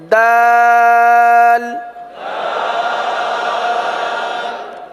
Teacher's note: जबान की नोक और ऊपर के दांतों की जड़ से यह हर्फ अदा होता है · زبان کی نوک اور اوپر کے دانتوں کی جڑ سے یہ حرف ادا ہوتا ہے